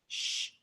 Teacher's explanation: So you're curling your tongue all the way back to the back of the roof of your mouth, as opposed to a regular SH sound that we make in English that comes out more right behind our teeth